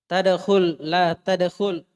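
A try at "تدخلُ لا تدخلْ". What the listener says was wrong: Baca dhammahnya baru masukkan la. Intinya penulis ingin melatih kita kalau la nahiyah masuk ke fi'il mudhari, maka fi'il mudhari'nya majzum dengan sukun karena masih anta.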